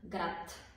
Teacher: произнесем думичката а накрая се чува беззвучна съгласна както ей тук град пишем с д д е звучна съгласна но произнасяме с т